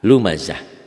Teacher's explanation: tak marbutoh jika dihentikan bunyinya jadi ha. Lumazah. Kalau disambung ini lumazatinil ladzi, tanwin ini dibaca satu.